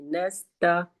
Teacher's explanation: नून भी बारीक पढ़ा जाता है सीन भी बारीक पढ़ा जाता है और त भी बारीक पढ़ा पढ़ा जाता है तो सिंपल वे